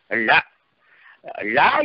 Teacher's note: தமிழ் என்பதில் வருகிற ழகரம் நுனிநாக்கு மேல்வாயின் அடிப்பகுதியை வருடுவதால் பிறப்பது.